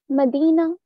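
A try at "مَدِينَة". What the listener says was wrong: You're missing out the ta marbuta from your chest. Warda, Medina.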